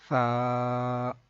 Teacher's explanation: ثا کو پڑھتے ہوئے سا سیٹی کی آواز بالکل بھی نہیں آئے. تو اس کا ایک طریقہ ہے کہ آپ اپنے اوپر والے دانت اور نیچے والے دانت جو ہیں ان کے درمیان اپنی زبان کی نوک کو تھوڑا سا باہر نکال کے پکڑ لیں نرمی سے اور پھر ادا کریں سا.